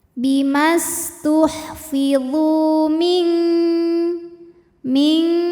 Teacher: Sebab nun sukun menghadapi huruf kaf, maka bunyi nun sukun samar-samar siap-siap menuju makhraj huruf kaf yaitu pangkal lidah ya, siap-siap ke pangkal lidah disertai dengungan. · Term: ikhfa hakiki